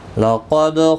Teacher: قاف مستعلیہ ہے، پر پڑھا جائے گا، دال ساکن پر قلقلہ ہوگا